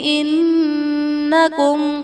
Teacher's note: میں نون مشدد ہے، یہاں پر غنہ کر کے پڑھیں گے، اور میم ساکن کے بعد حرف با اور میم کے علاوہ وا آ رہا ہے، تو یہاں پر اظہار شفوی کا قاعدہ ہوگا، یعنی میم ساکن میں ہم غنہ نہیں کریں گے۔